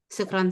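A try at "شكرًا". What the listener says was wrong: Tapi sukran itu salah, sukran. Sukran dari sakran. Sakran itu. Harus shin. Kalau beda shin sama sin, watarannas sukara. Sukara itu mabuk. Syukran aja, syukran.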